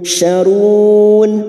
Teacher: Bertemunya mat dengan huruf hidup yang dibaca waqaf, mat arid li sukun. 4 harakat kita panjangkan.